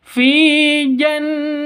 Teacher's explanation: Di sini ada nun tasydid. Artinya nun tasydidnya berdiri sendiri. Berarti ini namanya gunnah musyaddadah. Dengung 2 ketukan.